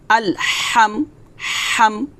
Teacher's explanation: তারপর হামজা লাম জবর আল, হা মিম জবর হাম, আল হাম। হা, হা এটা কিন্তু হা খলকের মাঝখান থেকে চাপ দিয়ে বলতে হবে।